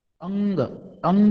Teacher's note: પુંગ બોલતી વખતે નાસિકા નાકમાંથી હવા વધારે બહાર નીકળશે · શબ્દ બોલશો તો પણ નાક વાટે હવા બહાર નીકળશે. તો કુંજર, તો કુંજર તમે બોલો, કુંજર, તો કુન બોલો ને ત્યારે પણ તમને જ ખબર પડી જાય, બરાબર, અનુભવ થાય કે અંજ બોલતી વખતે આપણે નાકમાંથી ધ્વનિ નીકળશે, બરાબર છે. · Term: અનુનાસિક